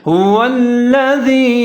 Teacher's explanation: ہا کے اوپر پیش ہے، واو کے اوپر زبر ہے، آگے لام مشدد ہے، یہاں ادغام کریں گے، لام کے اوپر زبر ہے هو الذی، دال کے نیچے زیر ہے، یا مدہ ہے یا ساکن ہے، دال اور یا ملا کے پڑھیں گے اور تھوڑا سا لمبا کریں گے